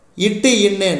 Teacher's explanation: நாவின் நுனி அன்னத்தின் நுனி